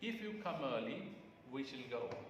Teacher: rising tone is sometimes referred to as glide up glider okay it consists of a rise in the pitch of the voice from low level to the high level